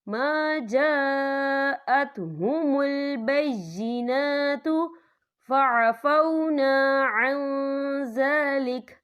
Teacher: یہ مد جو ہے مد متصل ہے، اس کی مقدار 4 حرکت کے برابر ہے، تو ہم اسے 4 حرکت کے برابر کھینچ کے پڑھیں گے.